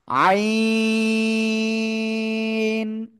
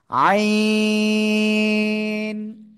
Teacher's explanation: চার আলিফ টেনে পড়তে হবে